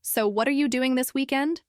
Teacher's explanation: Notice how the intonation rises at the end